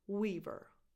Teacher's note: Tense [i] after the W.